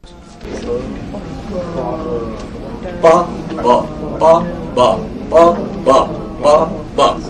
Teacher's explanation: It's a buzzing sound. It's a humming sound. That means vocal cords are coming together